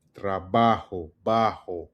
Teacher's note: It's a controlled breath from the back of the throat with the G and J sounds.